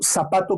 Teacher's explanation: pero decimos aquí en Perú zapato con S